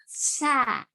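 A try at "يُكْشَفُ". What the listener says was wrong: No. Bukan sa. Sya. Bukan. Itu ujung lidah itu. Coba tengah lidah sekarang. Sya.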